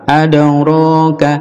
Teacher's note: qalqalah mantul di dal. Adraka, ka pendek.